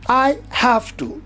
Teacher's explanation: in have V it is a voiced one it becomes voiceless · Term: regressive assimilation of voice